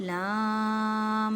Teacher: لام کے پر بڑی مد ہے، اس کو 5 الف کی مقدار میں کھینچ کر پڑھنا ہے